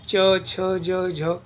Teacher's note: तालव्य तालु से बोले जाते हैं। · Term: तालव्य वर्ण